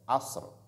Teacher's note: Il y a ra qui est venu après, qui porte aussi sukun à l'arrêt, qui est aussi emphatique. Donc, la lettre ra ne doit pas apparaître, ne doit pas trop apparaître, parce qu'elle est précédée de sukun